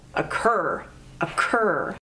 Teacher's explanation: occur has two syllables occur and the emphasis is on the second syllable